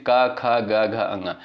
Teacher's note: इनका उच्चारण जो है कंठ से होता है